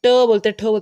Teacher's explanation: जब जीभ की उल्टी हुई नोक का निचला भाग मूर्धा को स्पर्श करता है, कि जब उल्टी होती है आपकी ट, जैसे ट बोलते हैं, ठ बोलते हैं, तो जीभ उल्टी होती है और वो ऊपर जाके टच करता है, वो होता है हमारे पास मूर्धन्य व्यंजन, ट वर्ग।